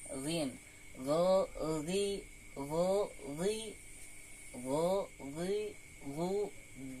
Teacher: itu dari adnal halqi yaitu ujung ujung daripada tenggorokan · Jadi huruf ghin makhrajnya itu dari adnal halqi. Huruf ghin yaitu dari ujung tenggorokan di sini.